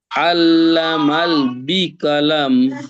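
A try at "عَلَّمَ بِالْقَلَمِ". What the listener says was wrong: আল্লামাল নয়, আল্লামা বিল কলাম, আল্লামা বিল কলাম।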